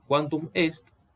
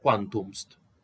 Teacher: que en lugar de escribir quantum est, caiga esta E y se lea quantumst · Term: prodelisión